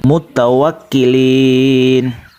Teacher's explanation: Hukum bacaannya adalah mad arid lis sukun, sebab mad tabi'i dibaca waqaf. Cara membacanya suara li dipanjangkan hingga 6 harakat.